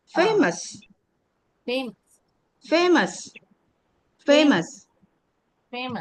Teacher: this is again O. It gives the sound of shwa.